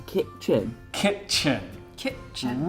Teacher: really strong emphasis on the kit and the chin